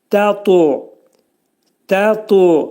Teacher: Burada ta hərfi qəlqələ hərfidir. Azacıq u'ya meyillidir.